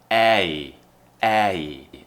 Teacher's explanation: so tongue should be near the front in the middle of the mouth and then the tongue is going up and we're doing that smiling shape again eh hey now let's